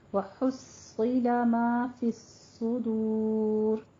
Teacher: صاد اور دال کے اوپر ضمہ ہے، دونوں کو ہونٹ گول کرتے ہوئے ادا کرنا ہے